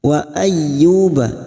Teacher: yu duma diikuti waw sukun 2 harakat